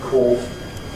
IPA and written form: kɔːf (cough)